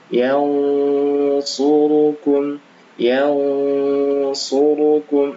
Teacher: karena bertemu huruf shad maka dibaca tebal ya ikhfanya